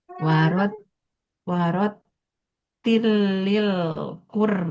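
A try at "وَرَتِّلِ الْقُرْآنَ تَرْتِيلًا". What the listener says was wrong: nah lamnya kan nggak ada tasdid, nah jadi jangan ditekan juga lamnya jangan tilil.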